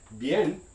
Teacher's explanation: the b sound in the word bien which means well is going to be a voiced labial stop